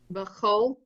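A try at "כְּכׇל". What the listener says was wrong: All right, that's not a bet at the beginning. Look again.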